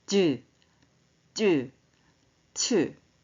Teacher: 혓바닥이 센 입천장 쪽으로 붙었다 떨어져요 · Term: 센 입천장 소리